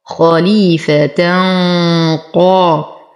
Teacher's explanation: ولو وصلنا يتولد لدينا تنوين وبعده القاف، فالحكم إخفاء مع غنة كاملة مفخمة لأن ما بعد التنوين حرف قاف